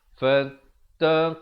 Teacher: Dibacakan lafzul jalalah dengan tebal 2 harakat.